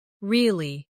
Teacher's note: Now say, Really. with a falling tone to show you don't believe someone.